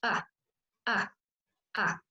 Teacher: El segundo sonido es muy parecido a la A que nosotros tenemos en español, la única diferencia es que es un poquito más cortita.